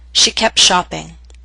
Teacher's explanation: in Fast and formal speech we sometimes omit the T when the ending of one word and the beginning of another form a consonant group